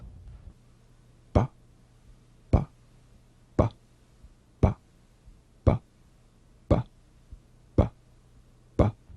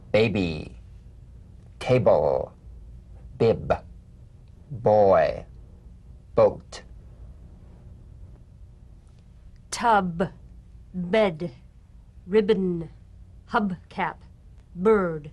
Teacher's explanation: the springing away from contact not by pressing the lips together you'll feel a gentle voiced pulsation on the lips like a delicate crisp tap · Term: voiced labial stop